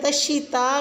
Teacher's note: تشیتا میں آپ نے یہ اس بات کا خیال رکھنا ہے کہ تا کو باریک پڑھنا ہے یعنی کہ موٹا نہیں کرنا، اور الف کے اوپر مد جو ہے اس کو آپ نے 4 سے 5 حرکہ لمبا کھینچنا ہے۔